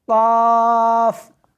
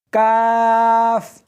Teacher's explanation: اس حرف کو موٹا کر کے پڑھنا ہے، قاف، اس حرف کو باریک کر کے پڑھنا ہے، کاف